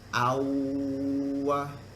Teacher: Dengung ni, tapi dengungnya ikut huruf waw. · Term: Idgham bi gunnah